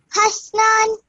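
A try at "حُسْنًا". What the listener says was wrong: Okay, the ha has a dhamma on top of it, so it's husnan. Okay, so previously you said hasnan. This is actually husnan. Okay, just be mindful of remembering what stroke the letter carries.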